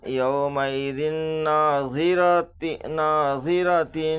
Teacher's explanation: 2 زیر کی تنوین کا ادغام ناقص مع الغنہ ہوگا